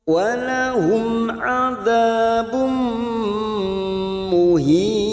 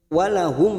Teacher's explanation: Walahum adzabum muhin. Walahum, mim sukun bertemu ain idhar safawi, kita baca jelas